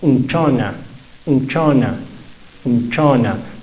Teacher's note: Esa esa u no va a estar acentuada va a ser bien suavecita